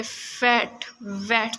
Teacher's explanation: the initial sounds of the words फैट and वैट, जब आप इनकी प्रैक्टिस करेंगे फैट वैट तो आप फील करेंगे कि आपके अपर टीथ लोअर लिप को टच करते हैं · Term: लेबियोडेंटल्स